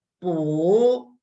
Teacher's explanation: So here is second tone, rising tone. You see the tone mark is rising. It goes up.